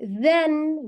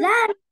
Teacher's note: your tongue tip has to touch your front teeth, right?